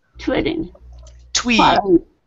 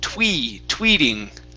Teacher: you had said twitting okay so give me a long e here